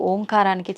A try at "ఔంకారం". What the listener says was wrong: అది ఓంకారం కాదు, ఔంకారం. మనం పలకడమే దాన్ని తప్పు పలుకుతున్నాం. మనం మాట్లాడుతున్న ప్రతి మాటల్లో ఎక్కడో ఒక చోట అకారము, ఉకారము, మకారము ఉంటాయి. అకార ఉకార మకార అర్ధమాత్ర ఇది ఓంకార. ఔం అని ఉచ్చరించినప్పుడు అకారము ఉకారము రెండూ పలకబడి మూకారం దీర్ఘమవుతుంది.